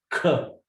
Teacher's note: You have to add aspiration to it. You have to blow the air.